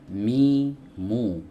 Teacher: dia keluar dari dua bibir bibir atas dipertemukan dengan bibir bawah layaknya kita mengucapkan huruf M di dalam bahasa Indonesia Nah Mi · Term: huruf mim